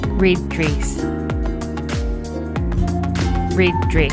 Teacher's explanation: the difference in sounds that you will hear has a lot to do with the fact that my tongue is a lot higher for the new zealand pronunciation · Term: dress vowel